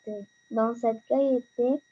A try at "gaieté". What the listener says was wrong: Dans cette gaieté, ici le E c'est muet, je ne prononce pas le E.